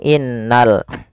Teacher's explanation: pada alif lam di sini lamnya ditampakkan dengan jelas ini bukan inq tapi langsung ke lam alifnya dianggap tidak ada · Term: Alif Lam Qomariah